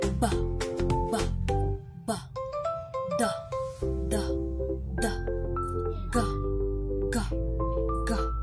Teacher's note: Ang mga tunog ay nabubuo sa pamamagitan ng pagsara ng dalawang bahagi ng bibig tapos biglang pagbukas. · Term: Pasara